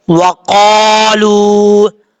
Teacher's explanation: वाव जबर वा, कौफ अलिफ जबर कौ, वक़ा, लाम वाव पेश लू, वक़ालू, कौफ हुरूफ मुस्तालिया में से आप पढ़ेंगे, लाम के बाद वाव मद्दा है, एक अलिफ की मकदार लंबा करके पढ़ा जाएगा